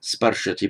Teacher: strengthening the vowel from ri to ar